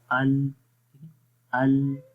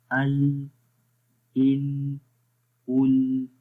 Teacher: جب ال کی آواز آتی ہے تو آپ کو یہ پتہ چلے گا کہ زبان سامنے والے تالو کے اوپر ٹچ ہو رہی ہے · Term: لام کا مخرج